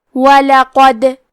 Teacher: یہاں دال کا حکم ہے قلقلہ. قلقلہ کا معنی ہے حرف ساکن کو ہلانا، تو ہم حرف دال کو ہلاتے ہوئے یہ کلمہ کو پڑھیں گے